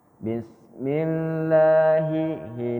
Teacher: Ini pakai huruf ini ha besar ya Ha kerongkongan paling bawah